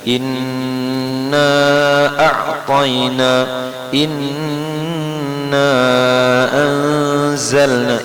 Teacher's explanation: Jadi inna di situ nun tasydid tahan ya.